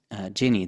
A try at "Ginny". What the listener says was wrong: It's the harder G, Guinea.